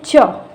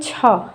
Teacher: और अंग कम हवा निकल रही है, च कम हवा निकल रही है, छ ज़्यादा हवा निकल रही है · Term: महाप्राण